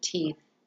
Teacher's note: sound is a voiceless fricative sound